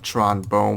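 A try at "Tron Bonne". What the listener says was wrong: I thought it was pronounced Tronbon, not Tronbone.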